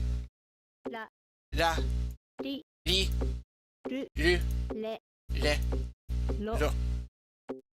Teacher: What we write as R is actually a sound between R and L. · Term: R series